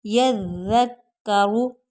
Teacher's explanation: और दूसरा है यज़्ज़क्करू, ज़ाल की सीटी नहीं निकलेगी, यज़्ज़क्करू। रा को पुर पढ़ेंगे क्योंकि इसके पेश है, तो पेश और ज़बर वाली हरकत जब हो तो रा जो होती है वो पुर पढ़ी जाती है।